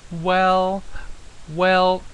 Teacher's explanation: it's very high pitched and it's quite flat that is the first tone